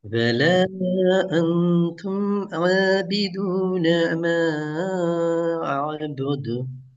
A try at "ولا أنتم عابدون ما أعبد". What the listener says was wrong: இப்போ ஐன் இப்போ அபுது அதெல்லாம் சரி வராது. இந்த ஐனுடைய அந்த பொசிஷனுக்கு நாங்கள் வரணும் இப்போ.